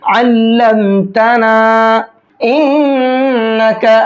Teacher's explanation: इन्नका की नून में गुन्ना करेंगे, क्योंकि नून के ऊपर तशदीद है, अगर नून पर तशदीद होती है तो गुन्ना करके पढ़ते हैं।